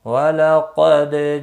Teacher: وَلَقَدْ قاف مستعلیہ ہے، پر پڑا جائے گا، دال ساکن پر قلقلہ ہوگا